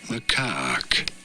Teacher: You do want to stress on the second syllable, on the caque syllable.